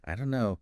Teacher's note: the don't and know just merge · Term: linking